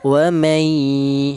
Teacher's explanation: Idgham itu artinya yaitu memasukkan huruf nun yang mati ini dimasukkan ke huruf yang ya ini sehingga menjadi satu huruf yang bertasdid itu namanya idgham atau arti yang lain itu menyatu. Jadi cara bacanya huruf nun yang mati ini langsung menyatu ke huruf ya. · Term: idgham bi gunnah